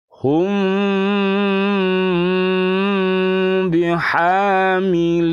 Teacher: membunyikan mim sukun dengan sedikit merenggangkan kedua bibir dan didengungkan selama ditahan satu setengah Alip tiga harokat jadi agak meregang bibirnya dan Kalau ditulis Ikhfa Syafawi itu adalah